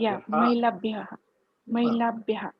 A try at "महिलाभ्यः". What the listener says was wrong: It's a full matra, not mahilabhyah, mahilabhyah. Full matra.